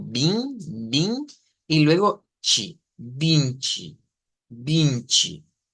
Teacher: En este caso es una I nasalizada, ¿verdad? Eso significa la virgulilla de la ñ, que tenemos que hacer algo como bin, bin, y luego chi, vinci, vinci.